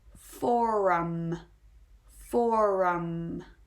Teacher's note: of the soft r at the end the four and then we really go strong with that rounded rhodic r before we finish off the word